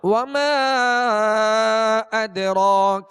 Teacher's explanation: وما پہ مد ہے اور دال ساکن ہے اور دال پر قلقلہ کریں گے. اسی طرح را پر کھڑا زبر ہے، را کو پر پڑھیں گے، ایک الف کی مقدار کھینچ کر پڑھیں گے